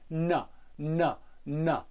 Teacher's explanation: M, and from the n, which is made with the tip of the tongue on the roof of the mouth